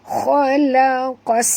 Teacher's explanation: Di atas sin ada tasydid. Bunyikan safir pada sin.